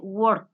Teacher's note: quiere decir que el sonido es sonoro no es sordo pero la k es un sonido sordo work es como que se movería el músculo no más pero no hay vibración de las cuerdas vocales